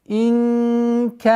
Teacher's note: Араайта ин. Здесь ихфа в размере двух огласовок, назализация. Инкана. Ихфа мягкая.